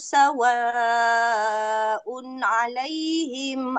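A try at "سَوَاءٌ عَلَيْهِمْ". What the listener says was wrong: Okay, dekat tanwin dia sebut. Un dengan ain dia sebut. Okay, kita kena cuma sikit sebab dia makhraj. Ada nun. Nun dekat lidah. Un. So nak pergi ke ain jauh. Unna. Unna. Okay, so kita tak nak macam tu. Un alaihim.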